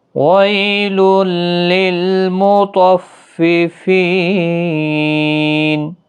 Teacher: تو حروف مستعلیہ ہے، پورا پڑھا جائے گا۔ فی یا مدہ ہے اور وقف کی صورت میں 3 سے 5 الف کی مقدار کے برابر کھینچ کر وقف کریں